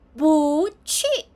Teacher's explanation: When 不 plus fourth tone, it becomes 不, second tone.